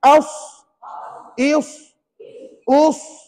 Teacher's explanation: itu namanya safir berdesir pada sebutan Huruf sad